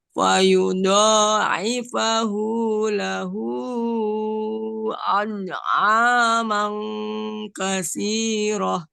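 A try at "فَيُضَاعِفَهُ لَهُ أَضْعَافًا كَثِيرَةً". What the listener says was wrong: Hu-nya betul, cuman paknya jadi mang ya.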